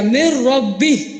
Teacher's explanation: نون نے اپنی صفات کو کھو دیا، وہ مکمل داخل ہو گیا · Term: ادغام تام